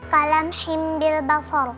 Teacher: Yang kedua, iqlab pada kata kalam himbil basar, karena ada kasrah tanwin bertemu dengan huruf ba, dibaca melebur ke huruf mim